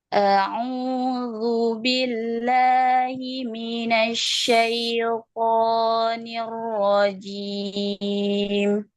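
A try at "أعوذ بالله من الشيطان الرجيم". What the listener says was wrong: Masih ngayun ya-nya. Minasyaito. Syaito. Waktu versi lambatnya, kalau versi diputus, syaito. Versi disambung, syaito. Ya, jadi keto jangan dinaikkan makhrajnya. Ya, dialirkan. Kalau dalam Latinnya, syai, nya panjang. Jangan jadi ya. Ya, karena dia lin. Syaito, syaito.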